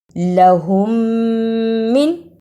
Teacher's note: یہاں میم ساکن پہ تھوڑی سی دیر لگانی ہے